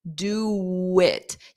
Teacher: You'll hear a W sound because we need a sound to glide between do and it otherwise you have to take a pause.